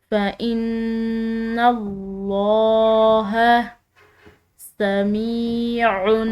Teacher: نون مشدد ہے، مشدد نون پر غنہ کیا جاتا ہے، تو اس نون مشدد پر ہم غنہ کریں گے اور لفظ اللہ کی لام موٹی اور پر پڑی جائے گی، کیونکہ اس کے پیچھے والے حرف یعنی کہ نون پر زبر آ رہی ہے۔